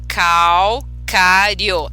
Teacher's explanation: todas as sílabas dentro dessa palavrinha calcário Elas têm entonação forte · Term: nação silábica